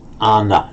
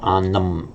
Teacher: Occasionally in poetry, and for the sake of the meter, the poet will shorten that final syllable by just dropping the m